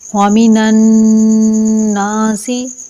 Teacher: نون کے اوپر تشدید ہونے کی وجہ سے نون مشدد ہوا، اور نون مشدد پر ہمیشہ ایک الف کے برابر رک کر غنہ کیا جاتا ہے۔ ایک الفی مقدار یعنی ایک مٹھی کو کھولنے یا بند کرنے میں جتنا ٹائم لگتا ہے، اور یہ غننے کی آواز ناک سے آتی ہے۔